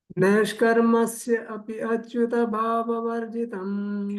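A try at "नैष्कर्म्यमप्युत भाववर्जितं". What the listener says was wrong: So it is not neshkarme asya. It is not neshkarme asya. It is neshkarme apya achyuta bhava varjitam. You said asya. after sandhi it becomes apya. After sandhi it becomes apya.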